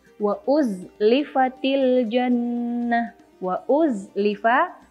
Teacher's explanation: Wa uzlifa, dan itu ada zai yang sukun, kemudian dibaca nyata dan jelas, sama sekali tidak ada hembusan nafas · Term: jahar